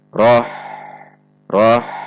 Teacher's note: Perhatikan sifat dan makhraj huruf ha, yaitu dibaca tipis dan tidak tertahan. Roh, roh, tidak roh terhentak atau memantul. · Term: ha sukun